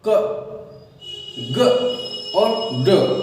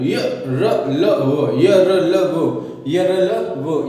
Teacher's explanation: मुख से जो हवा है वो कम मात्रा में निकलकर अल्प प्राण व्यंजन बनाते हैं